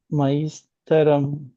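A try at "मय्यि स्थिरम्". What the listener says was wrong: It's thi. stiram. Stiram.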